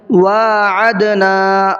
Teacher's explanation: نون کو بھی کھینچنا ہے اس لیے کہ یہاں پر الف مدہ کا قاعدہ ہے، الف سے پہلے زبر ہے۔